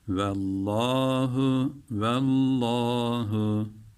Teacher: Artık Allah lafzının bu lamını kalın okuyacağımızı biliyoruz. Üstün veya ötre olduğu zaman.